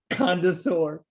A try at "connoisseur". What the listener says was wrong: I think you're adding a D. It's connoisseur. Connoisseur.